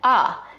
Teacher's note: we see in DC, similar to New York, is the raised thought cloth vowel, that ah